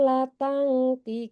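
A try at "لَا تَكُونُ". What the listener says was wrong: La panjang, dua harkat. La tangtikun.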